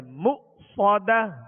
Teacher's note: صاد کو سیٹی کی آواز میں اور پر پڑھیں گے